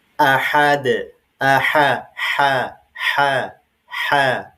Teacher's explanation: Enggak boleh sama antara ha yang kecil dengan ha yang besar. Kalau yang ha ini bunyinya halus, lembut ya, dari tengah tenggorokan.